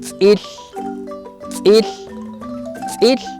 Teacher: El otro sonido lo representamos con la T, Z, apóstrofo. Su sonido es así, lengua, pegado nuevamente a los dientes de arriba.